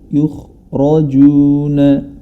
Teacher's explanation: huruf ra yang berharokat fathah, maka dia dibaca tebal